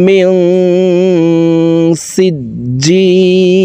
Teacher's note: এই নুন সাকিনকে নাকের ভিতরে লুকাইয়া গুন্নার সহিত পড়ব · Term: ইকফাহ গুন্না